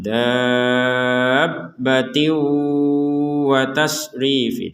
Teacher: Karena kalau kita menggabungkan maka ada hukum tanwinnya dimasukkan ke huruf waw disertai dengungan